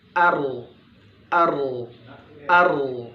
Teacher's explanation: Getaran yang berulang yang dimiliki huruf ro ya Jadi ada getaran ya seakan terasa ketika kita sukun kan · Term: at-taqrir